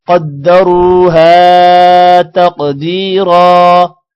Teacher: قوف موٹا ہوگا را بھی موٹا ہوگا را کے بعد واو ہے تھوڑا سا لمبا کریں گے ہا کو بھی لمبا کرنا ہے الف کی وجہ سے قوف